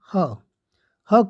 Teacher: ह को काकल वर्ण कहा जाता है